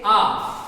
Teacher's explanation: आपको बोलकर देखेंगे मुख सर्वाधिक खुलेगा, जैसे बोलते हैं आ, तो आ में मुख सर्वाधिक खुल रहा है, इसी कारण ये विवृत कहलाता है